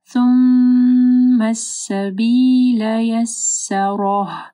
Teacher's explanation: رو کو موٹا پڑھنا اور ہا کی آواز آخر میں کلیئر آنی چاہیے